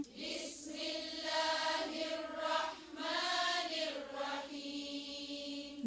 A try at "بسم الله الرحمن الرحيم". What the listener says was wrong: زیر کو اور باری کریں. بس بس ایک منٹ ایک منٹ بے نہیں بی پھر سے.